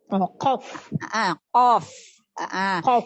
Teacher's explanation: Itu pangkal lidah bagian atas bertemu dengan langit-langit yang lembek.